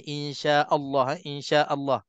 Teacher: jangan kita tebalkan Hamzah sebab selalunya Hamzah Allah dia akan terikut lam lafzul jalalah yang tebal